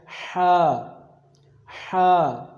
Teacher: اس کو آپ نے پڑھنا ہے سانس کی نالی کے درمیانی حصے سے، جو آپ کا حلق ہے، جو آپ کے منہ اور سینے کے درمیان والا حصہ ہے